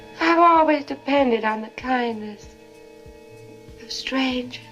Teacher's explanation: You hear how there's no R in strangers?